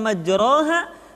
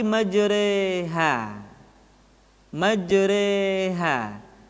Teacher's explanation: Dibaca imalah, dimiringkan. Jadi huruf ra yang berharokat fathah dibaca miring ke kasrah, sehingga bunyinya bukan majraha tetapi majreha.